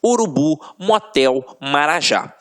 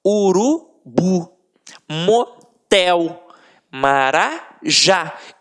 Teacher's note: Reparem que na hora da pronúncia, de forma mais aguçada, você vai perceber que realmente a pronúncia da última sílaba ficará mais forte. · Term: oxítonas